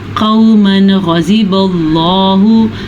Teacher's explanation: गुन्ना और किसी किस्म का खींचना यहाँ पे जायज़ नहीं है। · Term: इजहार